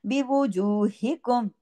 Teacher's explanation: ये हा सीने की तरफ जाएगी आवाज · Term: हा गले से